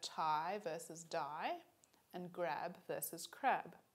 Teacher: with each pair the only difference between them is voicing one is voiced and the other is voiceless so we can see that the feature of voicing is distinctive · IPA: /taɪ/ /daɪ/ /ɡɹæb/ /kɹæb/